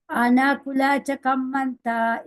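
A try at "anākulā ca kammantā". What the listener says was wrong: Now, did you notice there, this final there was very, very short indeed. Anakulacha, acha. There's a big difference.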